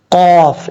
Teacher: مستا قاف حروف مستعلیہ میں سے ہے پر پڑھا جائے گا اور قاف کا مخرج ہے دو نقطوں والا جو قاف ہے اس کا مخرج ہے زبان کی جڑ اوپر والے تالو کے نرم حصے سے لگے تو قاف پڑھا جاتا ہے